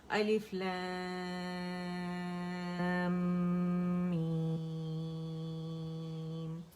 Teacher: اب میم کا ساکن 6 کاؤنٹس میں نے ادا کر دیا